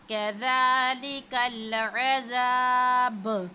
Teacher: अब कैफ को बारीक पढ़ना है और ज़ाल पर खड़ी ज़बर है, इसको हमने थोड़ा सा खींचना है